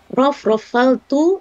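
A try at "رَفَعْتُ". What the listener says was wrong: Kenapa dalam? Kenapa Ibu cakap rofaltu? Dalam dari mana? Rofa tidak dalam.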